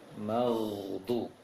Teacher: Berbeda dengan saudaranya itu kho, yang satu makhraj itu ditiupkan angin keluar, sedangkan ghain ditahan angin di tenggorokan atas. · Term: ghain sukun